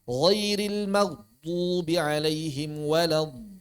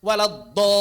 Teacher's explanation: saat mengucapkan huruf dod kurangi unsur-unsur dal. Kurangi unsur-unsur dal. Lembutkan pengucapannya.